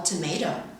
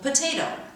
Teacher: The voiceless stops p, t, and k are aspirated at the beginnings of words, for example, tomato, and at the beginnings of word internal stressed syllables, for example, potato.